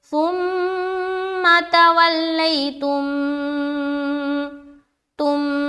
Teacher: آگے کہیں آئے گا تو میں آپ لوگوں کو وہاں پر بتاؤں گی، لیکن بہرحال یہاں پر جو ہے نا میم ساکن کے بعد دوسری میم آ گئی تو یہ ہو گیا ادغام شفوی، اور یہاں پر غنہ کے ساتھ پڑھیں گے میم کو میم سے ملا کر